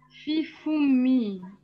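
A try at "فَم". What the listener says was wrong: Alors non, c'est pas comme en algérien foumoun, c'est famoun. Après, alors, même s'il y a une autre version, est-ce qu'on dit foum aussi? Mais moi, je pense que le littéraire le plus éloquent, c'est famoun.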